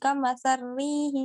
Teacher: kalau asusi idgham kamasari jadi ro ke ro gitu, enggak ke lam lagi, lamnya enggak lamnya dimatiin, enggak ada gitu, jadi kamasari.